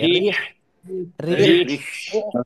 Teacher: আহ, রয়ের নিচে জের আছে। ওকে, রিহ, গলাটা চেপে হালকা বাতাস বের করতে হবে।